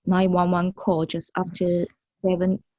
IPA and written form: ˌnaɪn wʌn ˈwʌn (911)